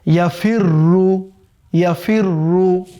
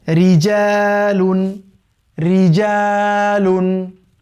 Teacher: অর্থাৎ এই র শব্দের উপরে জবর বা পেশ থাকলে মোটা করে পড়তে হবে, আর যদি র শব্দের নিচে জের থাকে, এটাকে থিন করে পড়তে হবে।